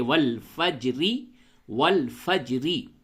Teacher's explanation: را پہ زیر ہے تو را کو باریک پڑھنی چاہیے، والفجری، والفجری، را کو باریک پڑھنی چاہیے، لیکن جب یہاں پہ آپ وقف کرتے تو یوں کہتے ہیں والفجر، را کو پڑ پڑھتے ہیں۔